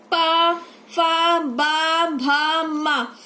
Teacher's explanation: जब हम इन वर्णों का या इन व्यंजनों का उच्चारण करते हैं तो हमारे दोनों ओष्ठ आपस में मिल जाते हैं, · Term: ओष्ठ व्यंजन